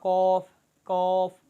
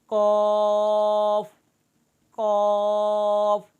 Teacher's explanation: ज़ुबान की जड़ और उसके मुकाबिल ऊपर के तालू से ज़ुबान की जड़ को लगाकर इसको मोटा करके पढ़ना, होंठ गोल भी ना हो, मद भी पूरी हो, और मुंह खोलकर पूरे मुंह में इसकी आवाज़ भर कर पढ़ना, ये इसका असल तरीका है।